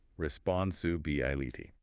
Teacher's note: That BI syllable right in the middle is where the main emphasis falls.